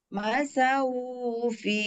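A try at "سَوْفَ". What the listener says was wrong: Nah, syaunya kepanjangan. Syaufi. Lin.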